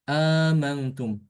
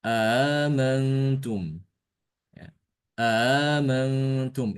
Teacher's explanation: Hamzahnya cuma satu aja. Nah, kalau Ibnu Amir dia menambahkan hamzah, ya, menambahkan huruf hamzah. Setelah itu hamzah yang keduanya itu ditasilkan.